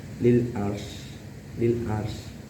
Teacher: itu dinamakan idhar halqi karena ada tanwin menghadapi huruf ain dan membacanya harus jelas, tidak boleh didengungkan.